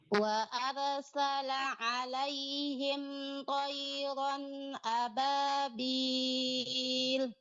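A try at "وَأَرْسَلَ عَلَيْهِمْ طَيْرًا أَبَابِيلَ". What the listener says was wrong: Huruf ra-nya lebih ditebalkan, Bu. Wa arsala.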